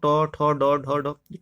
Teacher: ट वर्ग जो होगा मूर्धन्य या मूर्धा